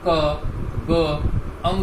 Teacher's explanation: अपनी वायु का कम प्रयोग करेंगे, इसलिए अल्प प्राण होते हैं